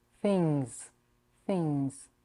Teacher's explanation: you raise the back of your tongue lock the air and don't release it through the mouth but through the nose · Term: NG sound